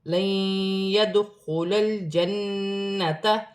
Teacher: نون ساکن کے بعد یا مشدد آ رہی ہے، نون ساکن میں غنہ بھی ہوگا، ملا کر بھی پڑھا جائے گا۔ دال ساکن ہے، حروف قلقلہ میں سے ہے، قلقلے کے ساتھ ادا کیا جائے گا